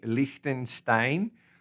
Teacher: most of the ones I've heard actually make that CH like a K